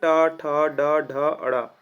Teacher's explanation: ट वर्ग को मूर्धन्य वर्ण कहते हैं। यह मूर्धा की ओर जाने लगता है या फिर मूर्धा से हमारा जो उच्चारण स्थान है वो होता है।